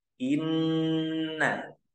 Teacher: artinya dengung nah dengung eh yang dimaksud dengung di sini yaitu menahan huruf nun tersebut sepanjang dua harakat lalu tambahkan dengung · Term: gunah